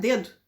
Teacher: No português gaúcho a língua fica para dentro